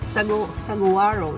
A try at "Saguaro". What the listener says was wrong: They don't pronounce the G, they just say Saguaro.